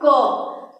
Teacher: जैसे हम बोल रहे हैं क, तो आप ध्यान देंगे कि क का उच्चारण हमारे कंठ से हो रहा है